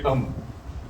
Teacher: मीम दोनों होठों के मिलने से निकल रहा